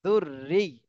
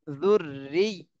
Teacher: ইয়ার উপরে তাসদীদ থাকলে ইয়াটা একটু চেপে বলতে হয়